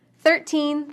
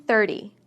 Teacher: We stress teens on the second syllable and tens on the first. The T in the teen number sounds like T, but the T in the tens sounds more like D.